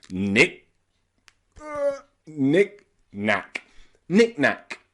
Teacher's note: the middle becomes reduced it's not nicknack it's nicknack knickknack knickknack we put a little glottal stop in the middle